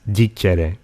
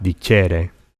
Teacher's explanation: In classical and vulgar Latin, these often show up with an unstressed e, like dicere. Unlike all the other infinitives, the emphasis is on the stem, not on the thematic vowel.